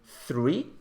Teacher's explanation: it's called interdental because the tongue will be placed in between your teeth when you pronounce this sound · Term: interdental fricative